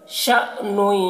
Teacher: شین میں جھٹکا لگائیں گے یہ حمزہ ساکنہ ہے تو جھٹکا لگے گا